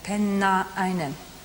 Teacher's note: There's no R in between Penna and einen.